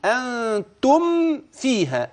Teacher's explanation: يعني إظهار الميم الساكنة أشد إظهارا لوقوع الفاء بعدها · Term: الإظهار الشفهي